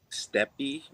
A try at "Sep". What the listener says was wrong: There's no T. There's no T in there.